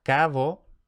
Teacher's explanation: la fricatización de oclusivas sonoras intervocálicas, por lo que llegamos a cabo.